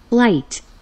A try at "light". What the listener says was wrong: 소리 안 나는 GH. Like, 흐트 아니고 Light.